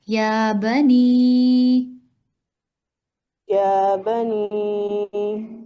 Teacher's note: یا پر مد نہیں ہے، یا پر کھڑا زبر ہے، اسے ایک الف کے برابر ادا کریں